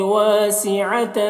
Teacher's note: واسعتن یہاں پر بھی الف مدہ ہے اور تن کی تنوین میں اخفا ہو رہا ہے، اسے اس کی آواز کو ناک میں چھپا کر پڑھیں گے۔